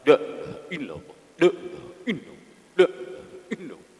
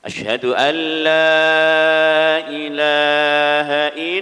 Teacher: Lanya harus panjang ya. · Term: Lam panjang